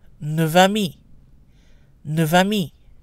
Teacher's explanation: We pronounce the F as is when neuf is on its own or followed by a consonant, but the F sound becomes a V before a vowel. · When followed by a consonant, it's also pronounced neuf, neuf vers, neuf vers. When followed by a vowel, the F is pronounced like a V. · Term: liaison